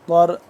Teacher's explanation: ضاد جو زبان کی بائیں کروٹ ہے اوپر والے دانوں کے ساتھ جب ٹچ کریں گے تو ضاد صحیح طریقے سے اپنی جگہ سے ادا ہوگا۔ را کو پر کر کے پڑھنا ہے۔